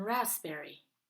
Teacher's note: sometimes we don't produce the letter P like in raspberry